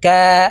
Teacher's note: কফ হরফ জিহ্বার গোড়া তার বরাবর উপরের তালের সঙ্গে লাগাইয়া উচ্চারণ করতে হবে